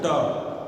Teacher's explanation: आगे मूर्धा, तालु से भी ऊपर एक स्थान है, क्या कहते हैं, जहाँ ट कहने से जहाँ जीभ जा रही है ट, तो वो जो ऊपर स्थान है उसी को मूर्धा कहते हैं।